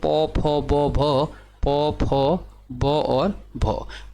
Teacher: पौ फौ ब भ जो निकलेगा ये निकलेंगे ओष्ठ से